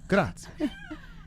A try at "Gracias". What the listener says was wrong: Can you roll your R's? Can you do that? You can't roll your R's.